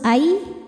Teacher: menghadapi huruf ya maka cara baca Nun sukunnya adalah dileburkan ke ya masuk Ai disertai dengung jadi di sini kita tahan Aya huruf